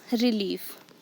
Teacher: Here re is unstressed, leaf is stressed.